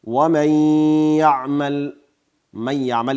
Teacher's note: ومن یعمل، من یعمل کې بیا نون ساکن ده او له هغې وروسته یا راغلی، ادغام کیږي. دلته هم نون په یا بدلیږي، یا په یا کې داخلیږي، خو د غنې صفت باقي ده